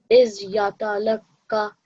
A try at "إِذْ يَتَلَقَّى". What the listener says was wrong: little bit longer. So at least 2 seconds. إِذْ يَتَلَقَّى.